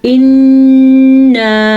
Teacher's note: نون کا غنہ ادا کرنا ہے شد کی وجہ سے اور مد کو کھینچ کے پڑھنا ہے